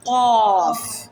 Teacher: जबान की जड़ और लहात के मुकाबिल तालू से निकलता है।